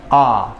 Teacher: We have down, as you go down the chart, your mouth opens more, and when you get to the bottom of the chart, you've got a vowel sound which is made with the mouth open, the tongue relatively down